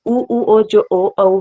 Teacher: जो ओ औ है उसमें ओंठ गोल हो जाते हैं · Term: वृत्तमुखी